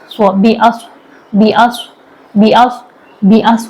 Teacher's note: स्वाद के मखरज में गाल थोड़े से आपके फूल जाएंगे। स्वाद को मोटा पढ़ना है यानी पूर पढ़ना है। स्वाद जैसे खाने वाला स्वाद होता है ना, खाने में स्वाद है, ये उससे रिलेट करके देखिए।